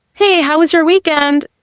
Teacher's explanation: Usually their voice kind of goes up at the end, right? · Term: rising tone